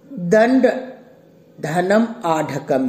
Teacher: दंड का जो अंत्य वर्ण अ है इसका उच्चारण कंठ है और जो आढ़कम का आ है उसका उच्चारण स्थान भी कंठ ही है और अ का विपरीत है और अ का ही दीर्घ रूप है उसका भी आभ्यंतर प्रयत्न विपरीत ही है।